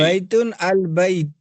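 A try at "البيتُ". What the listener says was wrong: البیتو اعراب ظاہر کیجئے، البیتو.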